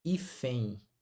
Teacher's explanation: O que acontece com ela? O E fica nasal, e fé, e o N vira I.